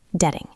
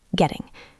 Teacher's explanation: In American English, the double T sounds like a soft D, detting. In British English, it is sharper, getting.